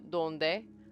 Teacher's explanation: tongue is right behind my teeth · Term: dental